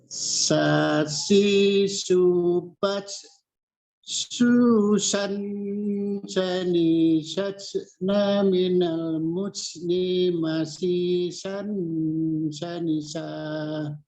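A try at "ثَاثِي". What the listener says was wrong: Belum Pak Haji. Bibirnya tidak dimonyongkan ya. Yang bergerak adalah ujung lidahnya. Ujung lidahnya ya. Sasi subas. Nah, jadi bibirnya tidak ikut dikedepankan atau tidak ikut dimonyongkan. Yang bergerak ujung lidahnya.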